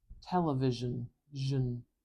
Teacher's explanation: Even though we've got ION here, there is not a lot of space between that zh sound and the final n sound. I'm going to use another schwa.